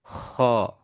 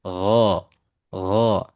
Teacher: Kalau ko ada hembusan udara ya. Kalau ko ya. Sedangkan huruf ghin ini tidak ada hembusan udara. Makanya kenapa huruf ghin ini memiliki sifat yang namanya jahar darah tertahan.